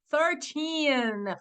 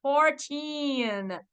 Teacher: Gente, você precisa forçar esse final. É a sílaba tônica da palavra numérica ali, né? Do 13 ao 19, precisa ser o final, tá?